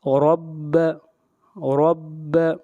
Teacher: را کے اوپر زبر ہے، را کو موٹا پڑھیں گے